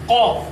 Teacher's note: এটি উচ্চারিত হয় জিহ্বার গোড়া এবং সেই বরাবর উপরের তালুর সাথে লাগায়া